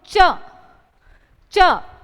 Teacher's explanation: आपकी जो जीवा है वह तालू के अड़ रही है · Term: तालव्य